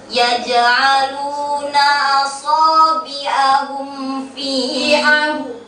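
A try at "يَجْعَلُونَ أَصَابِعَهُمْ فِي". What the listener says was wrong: Hum fi bertemu atau tidak? kan tadi seolah-olah nahan dia, nahan suara.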